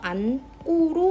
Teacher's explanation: 안고 같은 경우는 받침에 니은, 지읒 이렇게 두 가지가 있는데 그 중에서 니은만 발음이 돼서 안꼬로 발음이 됩니다. 자, 여기서 고가 꼬로 발음되는 이유는 저번 시간에 배웠던 된소리 대기에서 어간 받침에 니은, 지읒이 왔을 때 뒤에 오는 어미의 첫 소리를 된소리로 발음하라는 규정이 있었죠. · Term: 자음군 단순화